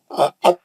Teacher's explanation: تا اور دال ایک ہی جگہ سے نکلتے، زبان کی نوک اور سامنے کے دانتوں کی جڑ. ات بھی ویسے نکلتا، اد بھی ویسے نکلتا، دال اور تا ایک ہی جگہ سے نکلتے.